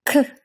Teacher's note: Our next K sound is the aspirated 크 as in cup